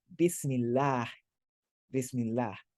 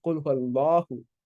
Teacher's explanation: When the vowel before it is a or a u, the vowel of Allah becomes more closed. It becomes ah.